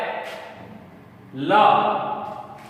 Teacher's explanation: क्योंकि जब इसका उच्चारण किया जाता है तो जबान का अंतिम हिस्सा आपके ऊपरी मसूड़े को स्पर्श करता है और जीभ के पार्श्व भागों से हवा के माध्यम से इसका उच्चारण किया जाता है, इसीलिए इसे पार्श्विक कहा जाता है दोस्तों।